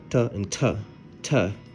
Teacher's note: this same letter can be pronounced like t, like a t sound, but deeply aspirated